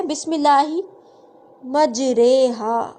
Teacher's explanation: ری ہے نا، را زیر ری اور را زبر را، ٹھیک، لیکن پورے قرآن میں ایک ہی جگہ ہے جہاں پہ ہم را کی جو آواز ہے اس کو زبر اور زیر کے درمیان ادا کرتے ہیں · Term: امالہ